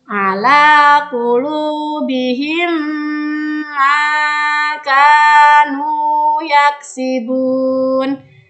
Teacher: Cara membacanya adalah dengan meleburkan 2 bunyi mim tersebut disertai dengan dengungan dan wajib memasukkan huruf mim pertama ke huruf mim yang kedua. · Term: idgham mimi